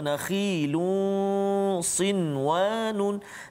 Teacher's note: Nun mati bertemu dengan waw juga tak boleh dengung kat situ sebab dia berjumpa dalam satu kalimah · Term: izhar mutlak